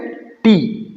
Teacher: टी, आप लोग देखें कि हमारा जो टंग टिप है ये ऊपर एल्वेलर रिज को टच करता है